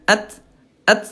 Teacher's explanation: Nah Bunda kalau ta dia syiddah. Dia kuat ya at. Tapi dia hams ya. At. Nah, jangan sampai mantul ya.